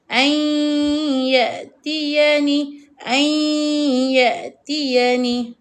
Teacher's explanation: Dia akan jadi ai tetapi hidung kita dengung. A yatiani. Dengung pula dua harakat. · Bunyi huruf nun tidak dengar. Tak berapa jelas bacaan huruf nun. Ai. Dia akan jadi ai. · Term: idgham bighunnah, idgham bi gunnah